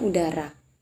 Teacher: U merupakan huruf vokal, yaitu bunyi ujaran yang terjadi karena adanya aliran udara yang keluar dari paru-paru secara lancar dan tidak ada hambatan untuk membentuk bibir saat U diucapkan bibir bulat